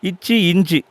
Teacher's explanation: இந்த 2 எழுத்துக்களும் நாக்குடைய இடைப்பகுதி மேல்வாய் பல்லுடைய இடைப்பகுதியை தொடுவதால் உருவாகுது.